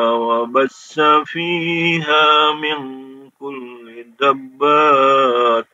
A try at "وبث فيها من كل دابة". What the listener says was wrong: Nah, dabbah itu 6 harokat ya. Dabbah 6 harokat. Sa-nya pendek. Kalau diperhatikan, taknya menjadi bunyi huruf H ya.